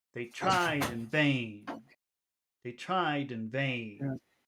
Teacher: this is the Rhythm that is pretty desirable to have an English where we have short long short long